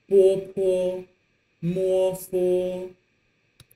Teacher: Those four initials are going to be pronounced with your two lips. So, put your upper lip and your lower lip together to make bopomofo.